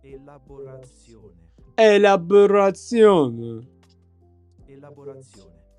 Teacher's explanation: The stress falls on the second to last syllable.